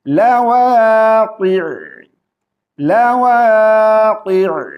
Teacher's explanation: عین کو ساکن کر رہے ہیں وقف کی وجہ سے